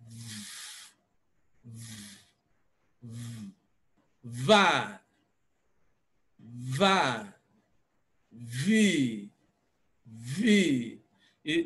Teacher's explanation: There's very palpable vibration that you can notice as you place your finger on your Adam's apple.